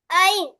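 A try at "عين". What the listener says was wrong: ஆ தொண்டையில வரணும் ஐன் கோயின் மாஷா அல்லா சின்ன மிஸ்டேக் உண்டு ஏன்னா ஐன் கொஞ்சம் தொண்டையில வரல திருப்பி கேட்பாங்க.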